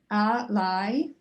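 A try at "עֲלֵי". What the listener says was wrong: remember, when it's a chataf vowel, that's never accented. So you want to make it clear it's alei.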